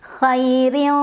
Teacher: Bacanya tipis, pangkal lidah kita tidak usah naik. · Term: tarqiq